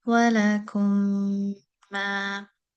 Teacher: So that first meme has been left without a sukoon, and then the second has the shadda to tell the reader that the first meme is assimilated into the second meme. So we go straight from the letter kaf with a dhamma straight to the letter meme in the next word, and we hold that for two measures with ghunna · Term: al-idgham al-shafawi